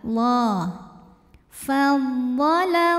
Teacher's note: Lam pada lafaz Allah dibunyikan secara tafkhim sebab huruf sebelumnya yang lam berbaris fathah. Maka dibacanya tebal.